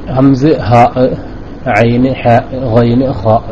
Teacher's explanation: വരുന്നത് ഹൽക്കിൽ നിന്ന് പുറപ്പെടുന്ന അക്ഷരത്തിനെ നമുക്ക് മൊത്തത്തിൽ ഹൽഖിയായ അക്ഷരങ്ങൾ എന്ന് പറയും ചങ്കിൽ നിന്ന് പുറപ്പെടുന്ന അക്ഷരങ്ങളെ ഹൽഖ് ആയ അക്ഷരങ്ങൾ എന്ന് പറയും